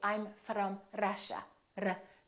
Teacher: that's called a rolling r that sounds like a foreign accent to American speakers